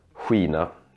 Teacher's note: it's almost like you put a little ooh in between so weena think of the word queen if you would say